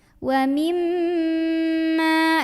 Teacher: jangan lupa dengung dulu ya, tahan dulu karena mim punya sifat dengung ya